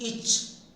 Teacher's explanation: Thus, the sound, the phoneme each is produced by raising the center of the tongue towards the center of the roof and making a tight contact and sending up the air through the sides of the tongue